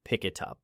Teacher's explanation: That link removes a pause and creates momentum. Say pick it up as one unit, not as three stops.